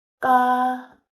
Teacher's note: 티읕 받침이에요. 에 모음이에요. 그래서 티읕 받침이 이제 뒤로 가요.